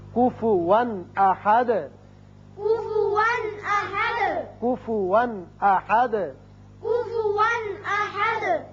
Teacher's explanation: یہاں کفواً 2 زبر تنوین ہے لیکن آگے حمزہ بشکل الف آ گیا جو کہ حروف حلقی میں سے ہے، لہذا یہاں اظہار حلقی ہوگا. احدن ہے چونکہ یہاں آیت ختم، رکوع بھی ختم ہے، دال ساکن ہے، وقت کریں گے لہذا دال ساکن ہو جائے گا